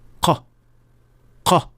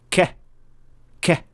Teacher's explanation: قاف کے ساتھ فرق یہ ہے کہ یہ منہ میں تھوڑا زیادہ گہرائی میں ہے، کیونکہ یہ صرف نرم تالو کو چھوتی ہے اور وہیں سے آواز پیدا ہوتی ہے۔